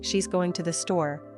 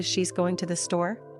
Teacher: The difference in intonation, the rising or falling tone at the end of the phrase, can completely change the meaning of the sentence.